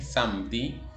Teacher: Entonces, no suena samedi, no suena samedi como nasalizada, sino que suena como la M, samedi, debido a que después de la M hay una E.